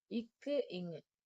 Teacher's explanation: நாவின் முதல் அன்னத்தின் அடியை பொருந்துவதால் பிறக்கும்